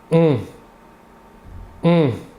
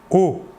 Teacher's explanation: L'air sortira entièrement par la bouche. Alors que pour le ON, l'air sortira par le nez. · Alors que pour le O, qui n'est pas nasal, vous ne sentirez pas d'air passer sur votre doigt. O. L'air sortira entièrement par la bouche.